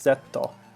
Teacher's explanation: without a d, more of a t sound